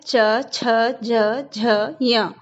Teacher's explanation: इनका जो उच्चारण स्थान है वो तालु से है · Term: च वर्ग